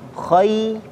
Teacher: Ya, hati-hati ketika khoi ini murni rongga mulut saja, tidak masuk ke rongga hidung